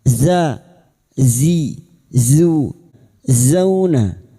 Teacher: Zain tarful lisan sejajar gigi seri bawah.